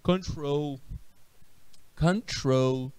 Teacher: você observa que a ênfase, a minha sílaba forte, é o troll